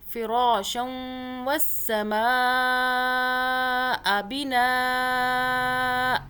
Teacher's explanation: واؤ پہ ہم نے 2 سیکنڈ کے لیے ہولڈ کیا